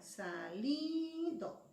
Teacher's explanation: Es li. Esa es la sílaba tónica. La vocal de la sílaba tónica es la I.